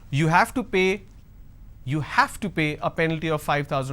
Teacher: Now here I'm going to stress on have. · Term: sentence stress